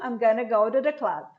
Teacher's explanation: Going to vira gonna, eu junto